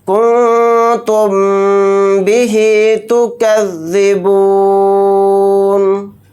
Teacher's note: نون کی آواز کو ناک میں چھپا کر اخفاء کے ساتھ پڑھیں گے اور یہاں پر غنہ کر کے پڑھیں گے، کیونکہ میم ساکن کے بعد با آ رہا ہے تو یہاں پر بھی غنہ کریں گے